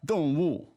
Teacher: 动物, two fourth tones, right?